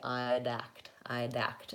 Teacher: So try saying, instead of I'd act with a break and having to do that D, I'd, it's easier if we link, because we say I'd act, I'd act. And then the D acts more like it's on the word act, I'd act. And for most people, making that initial D is much easier to do correctly than the final D. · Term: consonant to vowel linking